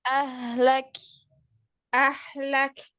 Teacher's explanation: Kaf sukun tipiskan jadi hams yang keluar itu hams tipis